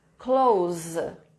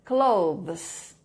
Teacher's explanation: esse TH é avozeado e o S final tem som de Z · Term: TH avozeado